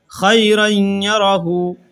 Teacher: یہاں پر تنوین کے بعد یا آ رہا ہے تو غنہ کے ساتھ ادغام کیا جائے گا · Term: ادغام مع الغنہ